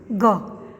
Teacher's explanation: यह हिंदी की कंठ्य, कंठ से, कंठ के सारे निकलती सघोष स्पर्श अल्प प्राण ध्वनि है।